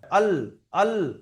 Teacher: আট নম্বর মাখরাজ লাম এটা জীবের আগার কিনারা জীবের যে আগা আছে তার সাইডে কিনারাটা উপরের যে দুটো দাঁত আছে সানায়া উলিয়া ওর পাশের দাঁতের গোড়ার সঙ্গে লেগে উচ্চারণ হবে